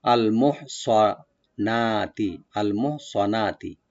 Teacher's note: আল মোহসানাত, মোহ হাটাকে একটু আমরা হামস করব গলার মাঝখান থেকে, আল মোহ, সোয়াটাকে ওপেন করে পড়বো একটু, সিন যেন না হয়। আর নুন এখানে আমরা মধ্যে বাদল করব, একালি টানবো, আল মোহ সোয়ানাতি, আল মোহ সোয়ানাতি, নুনটাকে ওপেন করে।